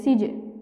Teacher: এখানে আমরা দেখতে পাচ্ছি যে নুন সাকিনের বামে সিন অর্থাৎ ইকফার যে 15 হরফ তাছাড়া জিম দাল দাল সিন, শিন, সদ্দ, ত, ফা, কফ, কাফ, সিন এসেছে নুন সাকিনের পরে, এই কারণে আমরা এখানে ইকফা অর্থাৎ অস্পষ্ট গুণনা করে পড়ব। জিমিয়া জের জি, লাম দুই জের লিন, কিন্তু ওয়াকফ করলে মাদের হরফে বামে হরফ ওয়াকফ হয়েছে মাদ্দে আরজি, আমরা 3 আলিফ টান দিয়ে পড়ব।